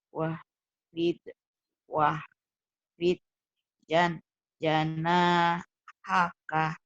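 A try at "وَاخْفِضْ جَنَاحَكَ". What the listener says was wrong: Lalu kho-nya Bu keluarkan. Wah, gitu ke kho. Sekali lagi.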